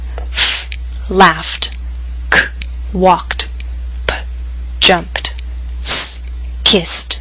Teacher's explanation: Pronounce the ed ending as t after voiceless consonants.